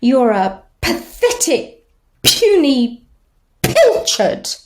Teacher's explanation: the voiceless bilabial plosive · just the p sound, the bilabial plosive, it does connote violence and antagonism